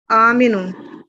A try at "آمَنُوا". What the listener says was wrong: آمینو. کیا بنا؟ فرق ہے آمنو اور آمینو میں.